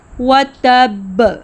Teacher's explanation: وَتَبَّ سورۃ المس یعنی کہ سورۃ لہب میں جب آپ وقف کرتے ہیں تو حرف با ساکن مشدد ہو جاتا ہے، چونکہ با جہر کا حرف ہے، اس لیے مخرج پر دباؤ کی وجہ سے سانس بالکل رک جاتی ہے اور ساتھ ہی آواز بھی رکتی ہے۔ شدت جس کے فوراً بعد ایک زوردار کلکلا آواز کا لوٹنا پیدا ہوتا ہے۔